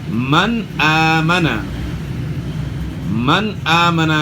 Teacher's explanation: نون ساکن کے بعد حروف حلقی میں سے حمزہ ہے تو یہاں اظہار ہوگا، یعنی غنہ نہیں ہوگا